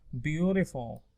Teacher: فيها flap T because it's between two vowels